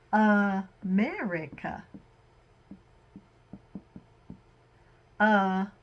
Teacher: at the beginning and the end we have this schwa sound